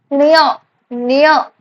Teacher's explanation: ये तालू से और नासिका से दोनों साइड से उच्चारित हो रहा है · तालू में भी जो टंग है वो तालू में भी टच हो रहा है और थोड़ा सा नाक से भी आवाज निकल रही है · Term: तालू और नासिका